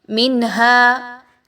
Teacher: منہا میں نون ساکن کے بعد ہا کی ادائیگی کیسے ہوگی؟ بہت کلیئر ہوگی، اظہار ہوگا. ٹھیک ہے، ہا جو ہے وہ حروف حلقی میں سے آ گیا، غنہ نہیں کرنا.